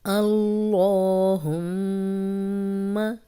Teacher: اللہم کا لام پیچھے زبر آ گئی تو یہ لام موٹا ہو گیا۔ اللہم، میم پہ ہم نے اس لیے غنہ کیا کیونکہ شد تھی، اور یہ آپ پیچھے بھی پڑھ چکے ہیں کہ جب بھی نون اور میم پہ شد ہوگی تو غنہ کریں گے۔